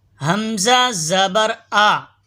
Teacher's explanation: حمزہ یہ حلق کے نیچے والے حصے سے ادا ہوتا ہے